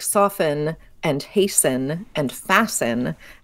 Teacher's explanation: you have a root word soft haste fast where the te has fallen away the audible te